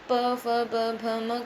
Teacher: और जो आखिर में बचता है प वर्ग, प में जो प, फ, ब, भ, म वर्ण आते हैं तो दंत के बाद होता है हमारे होठ। तो जब हम प, फ, ब, भ, म कहते हैं तो हमारे होठ आपस में टकराते हैं, तो इन्हें हम कहते हैं ओष्ठ व्यंजन।